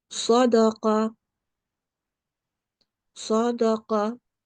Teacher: we will pronounce the qaf in a thick way and the Sod in a thick way. They are both the Tafkhim letters.